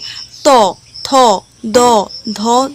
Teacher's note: প্রত্যেকটা জিনিস কিন্তু এখানে দাঁতের সঙ্গে দাঁতের স্পর্শে কিন্তু উচ্চারণটা হবে, তাই এটা কি? দন্ত বর্ণ।